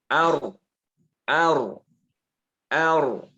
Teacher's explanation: Jadi dikatakan berulang karena dia setelah nempel lepas, nempel lepas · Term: at-takrir